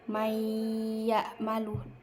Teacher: Jadi nunnya tuh gak usah dibaca. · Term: idgham bi gunnah